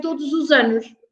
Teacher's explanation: because the next word starts with a vowel, we say todos os anos. And so the S changes into a Z sound.